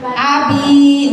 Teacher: Panjangnya cuma dua harkat. Jangan panjang-panjang. Dua harkat gitu doang Bu. Dua ketukan Bu. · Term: mad thi